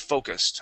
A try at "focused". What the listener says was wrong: Okay, give me that ED ending.